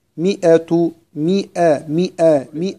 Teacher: نخرج من الميم المكسورة على الهمزة المفتوحة مباشرة